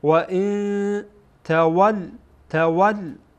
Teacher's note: بعد از نون ساکن تا آمده تا از حروف اخفا هست اخفا میشه